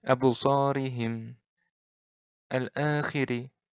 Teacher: Ri-nya ini pendek. Ri-nya ini tipis. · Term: ro' tarkik